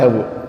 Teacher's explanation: Ketika ngucapin bu, suara u itu ada nafas keluar.